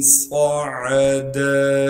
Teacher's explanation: صاد کو موٹا کر کے پڑھیں گے اور صاد میں سیٹی ادا کریں گے ، عین کو صاف کر کے گلے سے نکالنا ہے، دال